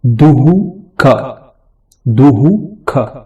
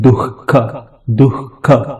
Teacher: उदाहरण के लिए दुहु ख, दुहु ख, हम लिखने के समय दू के सामने विसर्ग देते हैं, क लिखते हैं, लेकिन उच्चार करने के समय दुहु ख नहीं बोलते, हम बोलते हैं दुख, दुख। ऐसे वाले उच्चार जो होता है इसको जिह्वामूल कहते हैं।